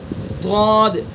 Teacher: تو نکالیے ضاد ضاد، بائیں کروٹ کو بائیں ڈاڑوں پر لگائیے گا، ادا کیجئے ضاد، اور دائیں طرف سے نکال کے دیکھیے ضاد، تھوڑا مشکل سا ہے، اور دونوں طرف سے ایک ساتھ نکالیے ضاد ضاد ضاد۔